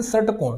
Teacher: आप षटकोण बोलेंगे, षटकोण। तो जैसे आप षटकोण बोलने की कोशिश करेंगे तो इस बार आपकी जीभ रोल होकर के पीछे की ओर जाएगी, यानी मूर्धा में जाएगी।